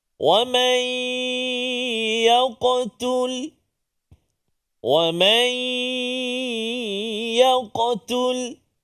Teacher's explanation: masukkan bunyi Nun ke dalam ya berserta dengung dengan dua harakat · bunyi Nun ke dalam ya berserta dengung dengan dua harakat kemudian Qalqalah pada huruf qf kena jaga Walaupun dia berada di tengah kalimah kan Qalqalah yang kecil Sura tapi dia tetap melantun jangan kita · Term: Idgham birunah